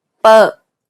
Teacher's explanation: This P sound is said without aspiration, meaning you should not release a burst of air when pronouncing this sound.